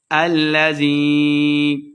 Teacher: الذی یہ مد ہے تو دو حرکات لمبا کر کے پڑھیں گے